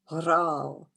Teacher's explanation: in the Arabic language, the ra has a vibration, that repetition of r.